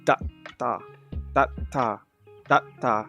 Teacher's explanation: So the sound that comes before it, there's a slight T sound at the end. It's very, very faint, but it's there.